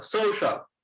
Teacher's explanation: সোতে stress দেই, তারপরে শাল, সোশ্যাল